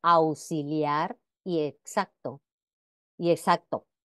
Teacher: Sin embargo, en algunos casos como auxiliar y exacto y todas las voces pertenecientes a sus respectivas familias léxicas. Es normal la pronunciación de la X como S, incluso en la lengua cuidada, o sea que la podemos escuchar en ambos casos.